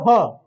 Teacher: ह में भी हमारा जिह्वा कुछ नहीं करेगा, डायरेक्ट गले से आवाज आएगा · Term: कंठ से ह